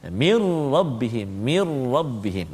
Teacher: masukkan bunyi Nun ke dalam ro tanpa dengung